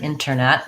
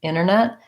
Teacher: I can say the T in this word, internet, with a pronounced real T, released air.